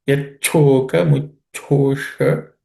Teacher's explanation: Sha, again, cerebral sha.